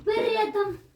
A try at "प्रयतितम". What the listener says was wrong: प्रिय नहीं है, प्रयतितम।